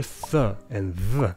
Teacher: interdental fricatives are uncommon. That's your th and th. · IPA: θ and ð